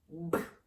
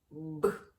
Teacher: повітря яке виходить з наших грудей зустрічає на своєму шляху перешкоду губи Ниточку розтягнути не вдається б робимо висновок звук Б твердий приголосний